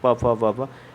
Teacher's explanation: प वर्ग क्या होता है, ओष्ठ से बोला जाता है।